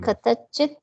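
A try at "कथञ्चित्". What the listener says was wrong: No, you are missing that nasal. Katanchit. This is the cha ja ja nya. That one. Katanchit. Katanchit.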